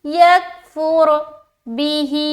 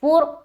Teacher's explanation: رائے ساکینہ ہے اور اس سے پہلے پیش ہے، تو اس را کو ہم باریک نہیں بلکہ موٹا پڑھیں گے